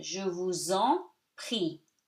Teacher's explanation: S between two vowels, even if it's in separate words, is pronounced like Z. So you link them together.